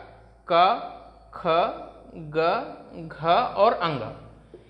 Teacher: ये 5 ऐसे वर्ण हैं जिनका उच्चारण स्थान क्या होगा, जिनका उच्चारण स्थान होगा कंठ। लेकिन वर्गीय व्यंजन के जो 5वें वर्ण हैं इनको क्या कहा जाता है, तो हमने पढ़ा था वर्गीय व्यंजन के जो 5वें वर्ण हैं इनको कहा जाता है नासिक्य वर्ण।